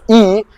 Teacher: it can be categorized as a high front unrounded tense vowel